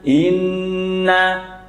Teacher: nun tasdid dengung tiga harakat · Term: ghunah musyaddadah, gunnah musyaddadah